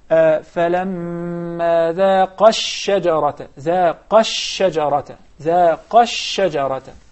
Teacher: if I connect the two words, I drop one of them. Definitely, I drop the مد alif, which is the first one.